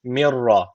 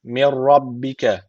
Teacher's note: ra harfini şeddeli gibi okuyoruz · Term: idğam bil tesbiti